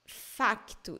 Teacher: It's the same word. But in Portugal, they say facto, as he says in the video. facto. You hear the C, facto. Here in Brazil, you say fato.